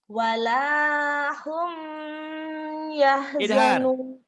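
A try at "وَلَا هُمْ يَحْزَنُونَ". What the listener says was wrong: Idhar humnya, jangan ditahan. Wala hum yahzanun.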